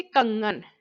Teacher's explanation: अनुस्वार के उच्चारण में वायु केवल नाक से निकलती है। जैसे कंगन, वर्ण तो इसमें है सारे जैसे उसमें थे, लेकिन उसमें क्या था, नाक और मुख दोनों में थे।